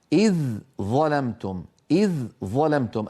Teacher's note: الذال مرققة والظاء مفخمة